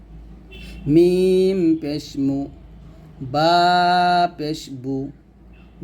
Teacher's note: পেশ উচ্চারণ করতে গেলে আপনার ঠোঁট গোল হবে